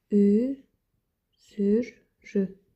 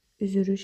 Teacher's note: L samiti R samitinə keçib. Üç sonor samit yanaşı işlənmişdir.